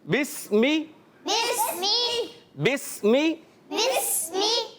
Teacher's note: ये बा को डायरेक्ट प्यारे बच्चों और मदनी चैनल के नाज़रीन सीन से मिला देंगे। ये अलिफ़ लिखा हुआ है मगर ये अलिफ़ पढ़ेंगे नहीं, ये डायरेक्ट बा सीन से मिलेंगे।